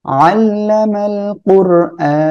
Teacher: র সাকিন তার ডাইনে পেশ রয়েছে মোটা করে পড়বো র হামজা খাড়া জবর আ এক আলিফ টান আর এখানে ওয়াক্ফ · علم القرآن দেখেন, আইনটা গলাটা চেপে পড়বেন। ওর র সাকিন তার ডাইনে পেশ রয়েছে, মোটা করে পড়বো র।